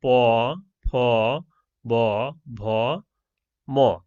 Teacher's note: দুই ঠোঁটের স্পর্শে যে ধ্বনিগুলো উচ্চারিত হয় তাই হলো দ্বি অষ্ঠ।